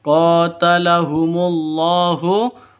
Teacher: qo panjang dua ketukan karena ada Alif diawali dengan fathah